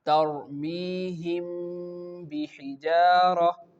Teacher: You can feel that the sound is going into your nose, but this sound is lighter than that of the previous one which we learned in the idgham e shafawi. · we hide the meme with a light nasal sound